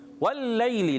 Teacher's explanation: واللیل لام مشدد ہے, ذرا رک کر ادا کریں گے